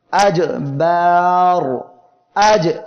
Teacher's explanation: জিম জিব্বার মধ্যখান তার বরাবর উপরে তালুর সঙ্গে লাগিয়ে উচ্চারণের সময় আওয়াজ বন্ধ ও শক্ত হবে।